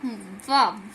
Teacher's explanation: अब हमारे पास जो दंतोष्टमी, ऊपर के दांत और प्लस नीचे होठ का वा